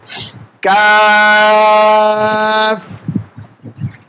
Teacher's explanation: তার বরাবর উপরে তালুতে লেগে দেবেন। জিহ্বার গোড়া থেকে একটু আগে বেরিয়ে তার বরাবর তালুতে আমরা লেগে দেব